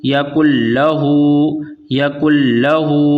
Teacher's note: تو یہاں پر نون کی آواز ادغام کرتے وقت نہیں آئے گی، یہاں پر صرف لام کی آواز آ رہی ہے، کیونکہ نون کو ہم نے لام سے مدغم کر دیا ہے، ملا دیا ہے، اور ادغام کے معنی ہی ملانے کے ہیں۔